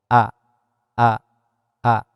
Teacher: Namun alif ieu keluarna tina pangkal tenggorokan. A, a, a, alif gitu nya.